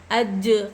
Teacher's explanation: जीम पर जज़्म हुर्फ़ क़लक़ला में से है, जीम क़लक़ला करना चाहिए। जीम पर अज क़लक़ला ऐसा किया जाता।